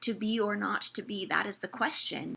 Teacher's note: not gets an emphasis where it doesn't usually